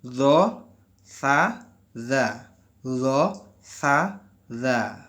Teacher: Makhrajnya dengan menempelkan ujung lidah di ujung gigi seri atas.